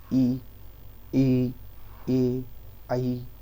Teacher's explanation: जीभ के आगे के हिस्से से जो उच्चारित शब्द होते हैं उन्हें बोलते हैं अग्रस्वर